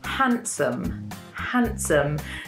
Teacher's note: As you can hear, we don't pronounce the D in this word. We don't say handsome, handsome, because it's really hard to say quickly.